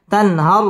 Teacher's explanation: তান ইজহার গুন্না ছাড়া স্পষ্ট করে পড়তে হবে তানহার র পুর হবে এবং র এর মধ্যে ওয়াকফ করতে হবে